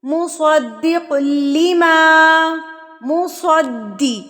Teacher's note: دال کے اوپر کیا ہے، تشدید ہے، تو اس کو آپ نے مضبوطی سے پڑھنا ہے